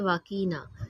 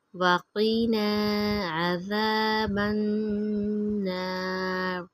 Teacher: یہ قاف 2 نقطوں والی ہے اس لیے اس کو موٹا پڑھیں گے